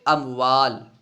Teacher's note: دیکھیے اموالن میں میم ساکن ہے، اس کے بعد دیکھیے واو ہے، با یا میم نہیں ہے، میم ساکن کے بعد میم اور با کے علاوہ دوسرا حرف یعنی واو ہے، تو یہاں پہ میم کو ظاہر کر کے پڑھیں گے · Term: اظہار شفوی